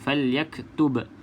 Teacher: pastikan yang ba mati ni qalqalah. Ada lantunan.